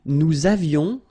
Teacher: Nous avions, little liaison, final S not pronounced.